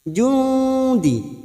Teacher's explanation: Ini juga yang disebut dengan ikhfa ausat. Kita samarkan bunyi nun sukun 2 atau 3 harokat. · Kita samarkan bunyi nun sukun 2 atau 3 harokat. Nun sukun bertemu dal ikhfa hakiki, dan ini juga yang disebut dengan ikhfa aqrab.